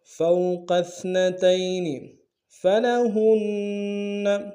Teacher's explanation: واو لین ہے بغیر کھینچے پڑیں گے